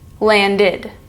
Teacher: Next up, we have landed, which is the ID sound because the root word ends in D.